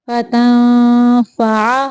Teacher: اخفا کرتے ہوئے فا کی ادائیگی کی شیپ دے کے تو اخفا کرنا ہے، یعنی اوپر والے جو دانت ہیں ان کا سیرا نچلے ہونٹوں سے لگا کے اخفا کرنا ہے